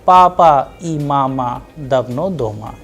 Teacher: It is a very simple statement, simple sentence, that is why the sound is flat.